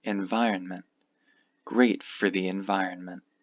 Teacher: this last T should be very light and sometimes you won't even say it at all